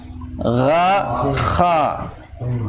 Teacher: Kha, gha ada di tenggorokan bagian atas.